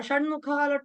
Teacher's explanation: ట వర్గంతో ట తోటి ఎండ్ అవుతుంది కాబట్టి ణ వచ్చింది దాని ప్లేస్ లో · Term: అనునాసిక